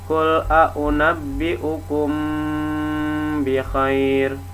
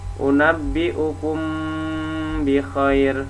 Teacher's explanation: Syafawi karena makhraj huruf mim dan Mbak ada di bagian bibir cara membacanya adalah merapatkan dua bibir atas dan bawah sebelah dalam atau samar-samar di bibir dan didengungkan · Misalkan gini, mim bertemu ba, qul a'unabbi'ukum bi khair. Jadi dirapatkan 2 bibir atas dan bawah, dan huruf mimnya terdengar samar-samar. Unabbi'ukum bi khair karena masuk ke huruf ba, itu namanya ikhfa syafawi.